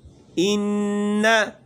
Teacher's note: غنہ کرتے وقت زبان کی نوک اوپر مسوڑوں پہ لگ جاتی ہے، ٹکرا جاتی ہے